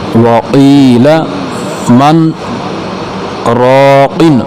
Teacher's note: मन और राकिन के दरमियान तकरीबन एक अलिफ की मिकदार खामोशी इख्तियार करेंगे, सांस नहीं तोड़ेंगे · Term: सक्ता